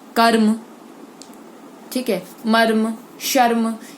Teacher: इसमें देखिए म का तो और श का, क का ज्यादा उच्चारण होला, लेकिन र आधे रूप में ही प्रयोग किया जा रहा है। इन शब्दों में र जो है वो स्वर रहित है, मतलब ज्यादा उस पर जोड़ नहीं डाला जाता। इस स्थिति में शब्द का पहला वर्ण पूरा होगा, र आधा होगा और तीसरा अंतिम वर्ण भी पूरा उच्चारित होगा, जैसे मर्म।